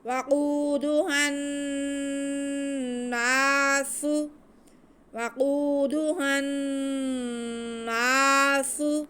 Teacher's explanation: سین میں سیٹی کی آواز آئے گی اور اوپر پیش ہے تو اس کو ہم کھینچیں گے نہیں بلکہ ساتھ میں ہی پڑھ لیں گے، بالکل بھی نہیں کھینچنا۔